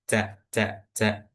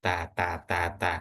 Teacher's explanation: Bedanya yang ca ini memiliki sifat hamas. Oke, yaitu ada hembusan angin atau udara yang keluar ketika mengucapkan huruf ca